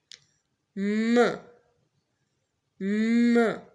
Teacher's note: m sound, which is produced through the nose, it is a voice sound. Why? Because there is the vibration of the vocal cords while producing this sound. · air goes out through the nose instead of the mouth. Now, what we are doing here, we are producing the sound through the nose, not through the mouth. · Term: nasal sound, nasal sounds